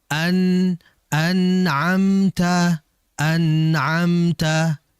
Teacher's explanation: nun ini keluar dari ujung lidah yang menempel pada langit-langit atas sehingga ditahan ujung lidah itu di langit-langit atas.